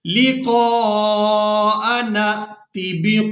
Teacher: यहाँ नून को हमने हमजा साकिन के साथ मिलाना है। इस नून को हमजा साकिन के साथ मिलाएंगे, नून हमजा ज़बर न।